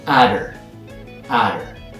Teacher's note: Her gets reduced to atter. But in North American English, the T also gets softened to a D sound.